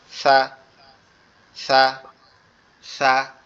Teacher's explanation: সাটা উচ্চারণ হবে আমাদের জিহ্বার আগা সামনের দুই দাঁতের আগার সঙ্গে লাগবে